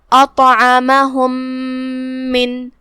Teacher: آخری میں میم پہ جزم ہے اور اس کے بعد حرف المیم آتا ہے کلمت من میں، یہاں حکم ہے ادغام متماثلین، لہذا ہم یہ پہلے میم کو دوسرے میم میں داخل کر کے ایک ہی میم پڑھیں گے غنہ کے ساتھ اور تشدید کے ساتھ